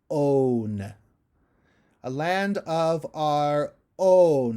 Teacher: you have to hit that really high note while doing a very closed vowel, own. And you've got multiple sounds in there.